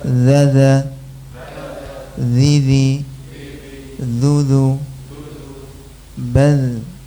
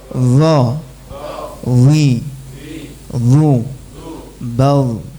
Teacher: Zalnya pergerakan lidahnya turun, dha-nya pergerakan lidahnya naik.